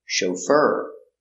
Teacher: the accent is on the second syllable chauffeur he is a chauffeur is that your chauffeur yes that's · Soft sound, sh. O, make a long O, show. Fur, fur. The accent is on the second syllable.